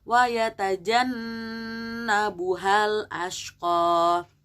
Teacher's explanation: Di situ wa yatajan ada gunnah, jadi kalian tahan 2 harokat minimal. Wa yatajannabuhal ashqa, jadi jangan hanya asal wa yatajannabuhal ashqa, tapi harus ada penekanan di situ karena dia gunnah, harus ada ditekan dan dengungkan.